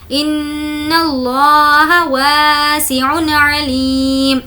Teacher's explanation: تنوین کے بعد حرف حلقی میں سے عین ہے اس لیے ظاہر کر کے پڑھیں گے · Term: اظہار